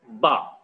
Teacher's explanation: Ba is supposed to be a bilabial voiced plosive sound.